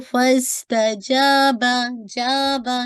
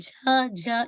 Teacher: ये जो जीम है ये इसके अंदर एयर पास नहीं होनी चाहिए, इसको इसमें आवाज रुक जाती है